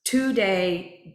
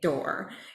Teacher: the t is slightly more pointed the D is slightly more like a little bit more of the tongue and slightly more muted